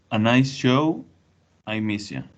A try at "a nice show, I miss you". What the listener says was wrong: And can you pronounce these parts in particular with more of a sh sound? Nice show or miss you? I miss you.